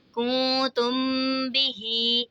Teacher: یہاں پہ دیکھیں نون ساکن کے بعد حرف اخفا کا تا رہے تو اخفا ہوگا، یعنی غنہ کر کے پڑھیں گے، اور میم ساکن کے بعد حرف با رہے تو یہاں پہ اخفاء شفوی کا قاعدہ ہوگا، یعنی یہاں پر بھی ہم نے غنہ کر کے پڑھنا ہے